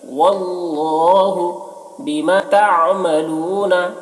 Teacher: عین کو ظاہر کریں گے، حلق سے ادا کریں گے · وَيُكَفِّرُ عَنكُم مِّن سَيِّئَاتِكُمْ واللہ بما تعملون خبیر۔ اللہ کے لام کو پر پڑھیں گے کیونکہ اللہ کے لام سے پہلے زبر ہے